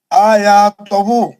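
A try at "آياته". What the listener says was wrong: نہیں تہو نہیں، پیش پڑھو. پیش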